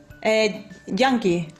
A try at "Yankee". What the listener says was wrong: Yankee. Not junkie. Yankee.